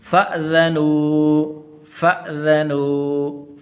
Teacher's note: فا کے بعد یہ حمزہ ہے، اس کو الف آپ نے نہیں پڑھنا، فَأْذَنُوا ایسے نہیں پڑھنا۔